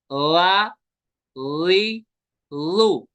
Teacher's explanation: लाल का मखरज है जुबान का सिरा और ऊपर के दांतों के अंदरूनी किनारे। सिरा यानी नोक थोड़ी सी बाहर निकलेगी।